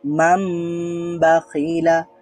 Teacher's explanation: বলেছিলাম যে ইকলাবের হরফ হচ্ছে বা তো এখানে যেহেতু বা আছে নুন সুকুনের পরে ন সাউন্ডের পরে বা আছে এজন্য ন সাউন্ডটা ম সাউন্ড হয়ে যাবে